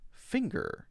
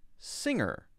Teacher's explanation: just the ng sound without the G sound